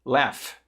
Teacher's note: Que ela tem um som que para o português parece que é um som de F, mas ela termina com GH.